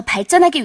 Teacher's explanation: 리을과 지읒이 만났더니 예사소리인 지읒이 된소리 쌍지읒으로 변하고 있죠